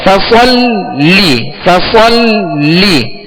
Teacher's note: इन्ना आतैना कल कौसर, फसल्लि लिरब्बिका वन्हर, फसल्ली, फसल्ली, लाम पर क्या है, तस्दीद है, लिहाजा लाम को दोहरा पढ़ेंगे, 2 मरतबा पढ़ेंगे